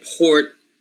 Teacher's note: So the stress is here. The syllable starts with a voiceless sound. It's a voiceless, with a voiceless stop